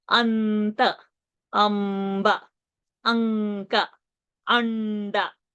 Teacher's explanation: See, the anuswara changed and the m came.